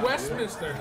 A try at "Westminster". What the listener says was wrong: Oh, where's the T? I'm not hearing a T in there.